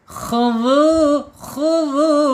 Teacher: Kemudian secara sifat yang lain istila'la. Isti'la ya terangkatnya lidah.